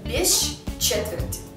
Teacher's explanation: или без четверти пишем без четверти но произносим без четверти здесь помимо длинного ща можно ещё произносить щч